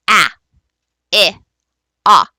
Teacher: are when you have one distinct distinct vowel sound like ah there isn't any co-articulation kind of messing around it is one distinct vowel sound